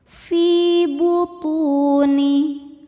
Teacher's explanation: Fi hukumnya mad thobi zohiri karena ada ya sukun sebelumnya kasrah. Cara bacanya panjang dua harakat.